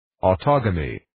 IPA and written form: ,ɔtoʊ'ɡæmɪk (Autogamic)